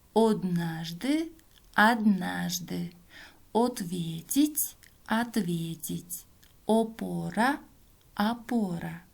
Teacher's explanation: в начале слова безударное гласное «о» произносится как «а»